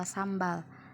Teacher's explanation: Di sini huruf M dan B letaknya sama di bilabial.